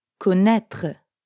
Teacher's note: Notice how there's no vowel sound at the end.